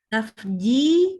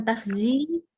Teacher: Ji-nya itu di tengah lidah.